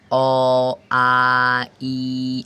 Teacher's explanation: একেবারে হুবহু বের হয়ে যাচ্ছে, কোনো মাঝখানে বাধা নেই, সরাসরি মানে ফুসফুস থেকে সরাসরি বেরিয়ে যাচ্ছে